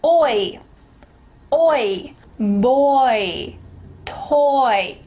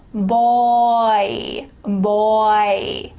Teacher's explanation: this is a dipthong which means it's a vowel that slides into another sound